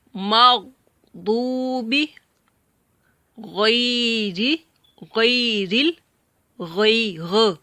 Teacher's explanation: غین گلے کے اوپر والے حصے سے اپر آف دا تھروٹ.